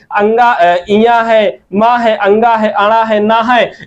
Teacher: अंगा का यहाँ पर देखिए तो कंठ है, इया का यहाँ पर देखिए तालु है, और यहाँ पर देखिए अणा का मूर्धा है, ना का दंत है, और देखिए यहाँ माँ का ओष्ठ है। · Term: पंचमाक्षर